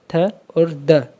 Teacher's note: tip of द tongue touches द back of द upper teeth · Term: डेंटल्स